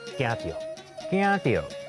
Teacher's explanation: 惊第一调后壁是轻声，所以伊唔免变调